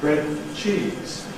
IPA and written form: ˈbred n̩ ˈʧiːz (bread and cheese)